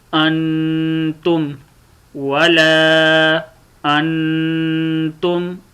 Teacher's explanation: نون کے اوپر غنہ کرتے ہیں، غنہ کہتے ہیں ناک میں آواز لے جانے کو